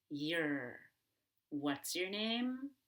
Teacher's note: Now, whether the situation is informal or formal, your very frequently becomes your, and that's totally fine. Make sure the ER is strong and you pull your tongue backward, like you're gonna swallow your tongue.